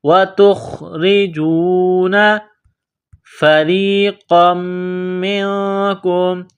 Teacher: را کے نیچے زیر ہے تو را کو باریک کرنا ہے، را کو یا کے ساتھ ملانا ہے۔ فَرِيقًا مِّنْكُمْ، نقطوں والا قاف ہے، بڑا قاف، اس کو موٹا کرنا ہے، قاف کو میم کے ساتھ ملانا ہے۔